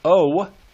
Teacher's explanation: when you say the word oh, the terminal part of that syllable is a W sound